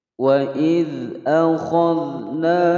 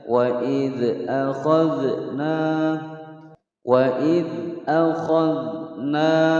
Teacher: Wa idz, wa pendek, idz pendek masuk ke huruf dzal, tidak dipantulkan karena huruf dzal bukan qalqalah